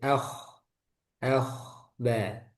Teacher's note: Bibirnya itu menyempit. Tapi nggak sampai mencucu.